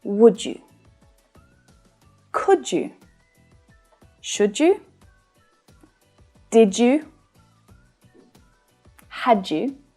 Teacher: where one word ends in a d and it's followed by a word that starts with a y, often it can combine to create the j sound.